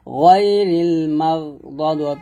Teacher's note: এখানে মাগ গাইনটাকে মোটা করতে হবে